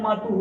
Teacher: जैसे हम मातुहु देखते हैं, मातुहु का जो विसर्ग है वो ऊ के साथ लगा हुआ है, अंतिम स्वर। तो हमारा विसर्ग का उच्चारण स्थान ऊ के उच्चारण स्थान के साथ गिनना हमें, और ऊ का उच्चारण स्थान हमारा होता है ओष्ठम।